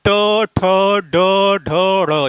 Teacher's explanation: ट वर्ग का उच्चारण मूर्धा से होता है।